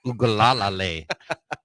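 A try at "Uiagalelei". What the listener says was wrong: You got too many L's in there.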